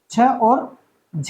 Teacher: महाप्राण का अर्थ है कि इनको उच्चारित करने में प्राण वायु यानी श्वास जो है वो अधिक लगता है